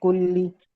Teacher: لام کے اوپر تشدید ہے اس لیے ہم اس کو زور دے کے پڑھیں گے، ذرا اس پہ ٹھہرنا پڑے گا۔